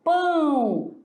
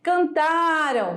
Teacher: Toda a pronúncia, o som ele sai parte pela boca, parte pelo nariz